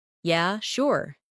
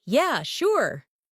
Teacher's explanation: if someone says, Yeah, sure, in a flat tone, it might mean they're not really interested. But if they say, Yeah, sure, with excitement, it's genuine agreement.